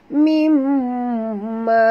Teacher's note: di sini ada tasydid dekat mim, maka wajib dengung, wajib al-gunah.